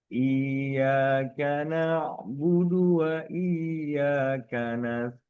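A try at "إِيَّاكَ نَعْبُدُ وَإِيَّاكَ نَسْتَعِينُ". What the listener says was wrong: Sedikit ditekan di ya musyaddadah.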